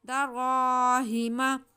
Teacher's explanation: रा पे ज़बर है, रा मोटा पढ़ा जाएगा और अलिफ से पहले ज़बर है तो अलिफ मद्दा है, रा को खींच के भी पढ़ेंगे। तनवीन के बाद दाल हुरूफ इख्फा में तो यहाँ पे गुन्ना होगा।